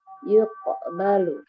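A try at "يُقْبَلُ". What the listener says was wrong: Lebih tebal, yuqaba.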